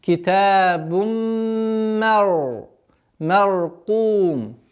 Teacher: полноценная назализация с полноценной ассимиляцией в размере двух огласовок. Обратите внимание, что здесь ра у нас твердое произношение.